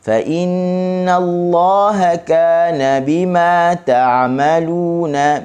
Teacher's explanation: Okey, dengan dua harakat masuk ke kalimah Allah dengan baris atas, maka kalimah Allah dibaca dengan tebal